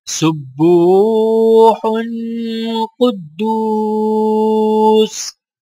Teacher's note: با کو واو ساکنہ کے ساتھ ملاتے ہوئے ایک الف کے برابر کھینچیں گے